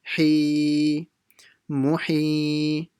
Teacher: So the ha will be long stretched.